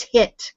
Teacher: it's very common for them to put an H on it, so it becomes hit